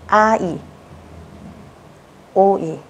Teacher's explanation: Nhiều bạn hỏi cô là thế đọc nhanh thành ai được không? Hay đọc nhanh thành ôi được không? Câu trả lời là không nhá. Nó là hai từ khác nhau. Các bạn sẽ phải đọc riêng ra.